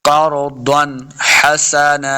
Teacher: نون ساکن کے بعد یا تنوین کے بعد حروف خلقی میں سے کوئی بھی حرف آ جائے تو اظہار کا قاعدہ ہے، یعنی بغیر غنہ کے پڑھنا ہے۔ قرضًا، دعاد حروف مستعلیہ سے اس کو موٹا بھی پڑھیں گے، قرضًا حسنا۔